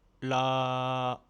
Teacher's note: Imagine que tu es un robot. Ta voix doit être plate, neutre. Sans aucune variation de hauteur. Il faut vraiment la maintenir constante du début à la fin du mot. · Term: le ton moyen